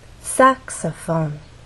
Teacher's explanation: In the case of saxophone, there are also three syllables, but the stressed syllable is the first one, which means we have two more syllables to make our voice fall down, and actually can fall down even further.